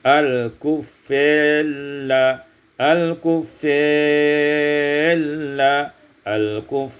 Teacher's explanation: baca imalah fathah fa dan alif, summa idgham ra fil lam, kemudian diidghamkan ra pada lam